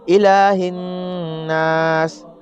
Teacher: نون مشدد میں گنہ ہوتا ہے، ایک الف کے برابر ناک میں آواز کو روکنا گنہ کہلاتا ہے · الہ الناس، حمزہ کے نیچے زیر ہے، بالکل بھی نہیں کھینچیں گے۔ لام کے اوپر کھڑا زبر ہے، کھڑا زبر کو حروف مدہ کی طرح ایک الف کے برابر کھینچ کر پڑھتے ہیں۔ ہا کے نیچے زیر ہے، زبر زیر پیش کو جلد پڑھتے ہیں، تھوڑا بھی نہیں کھینچتے ہیں۔